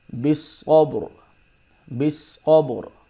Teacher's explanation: اگر ہم یہاں پہ وقف کریں گے تو را کو موٹا پڑھیں گے کیونکہ را سے ما قبل ساکن ہے اور ساکن سے پہلے زبر آ رہی ہے